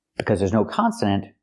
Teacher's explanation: Now we need the v sound in of because we don't pronounce the h in her. We link the sounds.